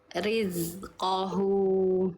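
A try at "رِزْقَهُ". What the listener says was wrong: Riz ya. Dikasih ngalir suaranya.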